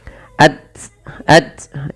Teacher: di dalam membaca ta sukun urutannya adalah kita membaca dengan syiddahnya dan baru dengan hamusnya